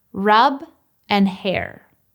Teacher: the difference with the vocalic /r/ in hair is that the tongue has to move to the correct position immediately after pronouncing the vowel.